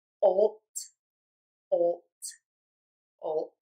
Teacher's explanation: For the t, same position, voice box is off, and is not moving.